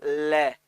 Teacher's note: तो जीभ दांतों से चिपकी तो अंदर से जो वायु आ रही है वो रुक गई, क्योंकि जीभ दांतों से चिपक ली तो उसने मार्ग रोक लिया वायु का। तो वायु जो है वो जीभ के दोनों बगल, दोनों किनारों से बाहर निकलती है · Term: पार्श्विक व्यंजन